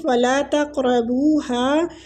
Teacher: قاب ساکن ہے اس کو قلقلہ بھی دیں گے اور مستعلیہ پور بھی پڑھیں گے